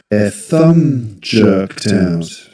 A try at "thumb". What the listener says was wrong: In the word thumb, the B silent. You don't pronounce it, no, there's no need. Thumb. You only pronounce the M sound at the end. Thumb. And the vowel sound is the same as in, for example, but. When you say but, like this. So this is thumb.